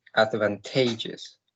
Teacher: I count 4 syllables, and the stress is in the third one.